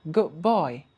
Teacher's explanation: So we have changed the D sound in good to a B sound. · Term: assimilation